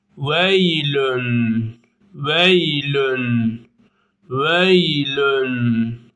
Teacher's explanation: ye cezim ve Vav cezim de birazcık çekiliyor